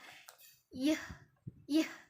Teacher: y merupakan semivokal yang bersuara